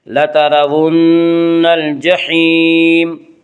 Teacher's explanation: نون مشدد غنہ ہوگا، غنہ کی مقدار 1 الف ہے